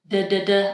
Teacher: That's our American D sound. And the voice is on. So D. I'm making a vibration. · the tongue is firmly touching only the alveolar ridge